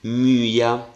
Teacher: l'accento l'ho scritto sul secondo elemento Ma leggo come se cadesse nel primo